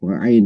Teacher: Ain itu posisinya di makhrajnya di tenggorokan di tengah.